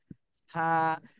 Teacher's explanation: হবে ছা জি চিহ্বার আগাটা এই যে উপরে যে দুই দাঁত উপরে দুই দাঁতের একদম আগার সাথে হালকা হালকা ভাবে লেগে ভিতরে চলে যাবে হালকাভাবে লেগে ভিতরে চলে যাবে ওইটা জিহ্বাটা হা একদম নরম ভাবে